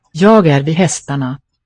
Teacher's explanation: Here the G of ya is heard because a vowel follows.